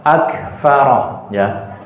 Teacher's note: Huruf kaf kalau disukun begini baru kelihatan apa? Ada nafasnya.